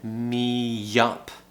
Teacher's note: So we're doing what we call intrusive sounds. Again, the y sound is appearing.